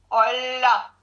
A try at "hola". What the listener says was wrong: Can you say it a little bit quicker, no? Hola.